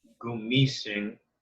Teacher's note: Malumay has no accent marks. So but the stress is on the second syllable.